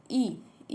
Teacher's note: ई है संवृत, अग्र, आवृत्तमुखी